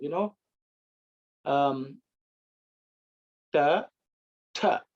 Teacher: the tongue actually curls upwards and points to the top of the head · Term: Tavarga